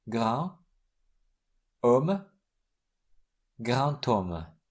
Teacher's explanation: In liaisons, D is pronounced T.